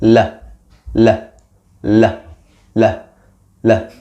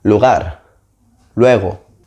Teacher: Put your tongue just behind the upper teeth. The tongue moves down when you produce the sound.